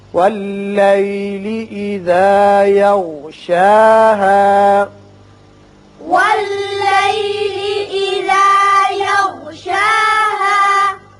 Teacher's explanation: دیکھیے یہاں شا کے اور شین کے اوپر کھڑا زبر ہے، ہا کے اوپر زبر اور الف ہے، دونوں کی آواز مساوی طور پر اوپر کھینچیں گے